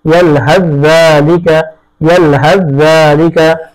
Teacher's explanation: অনুরূপ ভাবে ইয়ালহাস, তারপরে যালিকা, ইয়ালহাস যালিকা, ছা এরপরে জাল আসছে, ছাকে জালের মধ্যে পরিপূর্ণ ইদগাম করতে হবে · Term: ইদগামে মুতাজানিসাইন